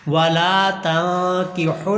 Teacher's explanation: والا لام کو لمبا کرنا ہے، زبر کے بعد الف ہے